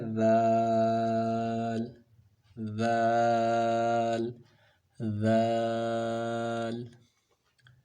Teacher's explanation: ذال کا مخرج ہے سا والا، یعنی جہاں سے سا پڑھا جاتا ہے وہیں سے ذال اور واو پڑھے جاتے ہیں، یہ تین حروف ایک ہی جگہ سے ادا ہوتے ہیں۔ ذال کا، سا کا اور واو کا مخرج، ان تینوں کا مخرج ہے زبان کی نوک اور ثنایا علیہ کا کنارہ